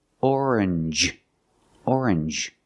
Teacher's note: you make the n Sound not the nasal sound just n and the J like juice